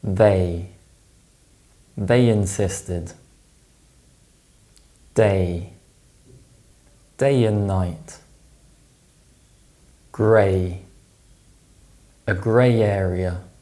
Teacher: When a word ends in the A sound and the next word starts with a vowel sound, we insert the Y sound. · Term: intrusion